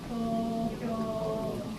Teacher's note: It's spelled T-O-K-Y-O in English, but actually first O and the last are long, so I added O. Tokyo. So both sounds are twice as long.